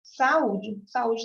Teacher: o U, ele é a sílaba tônica, é a mais forte daquela palavra que tem que ficar sozinho.